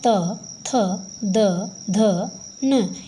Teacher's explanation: इनका जब हम उच्चारण करेंगे तो हमारी जो जीभ है वो दांत से टच होती है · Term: तवर्ग